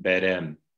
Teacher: became berem in classical Armenian with an unaspirated B